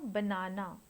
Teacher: the word banana has stress on the second syllable